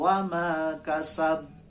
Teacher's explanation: wama kasab itu berat, paling berat pantulannya, karena ada tasdid di atas huruf ba. Kalau wama kasab di atas huruf ba tidak ada tasdid, maka berat saja pantulannya. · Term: qalqalah